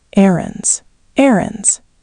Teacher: 2 syllables, stress on the first, not errands.